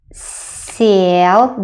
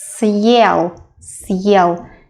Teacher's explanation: Сел, the first s sounds a bit softer. But if you put a hard sign, it has to stay hard.